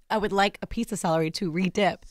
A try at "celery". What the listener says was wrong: You said salary.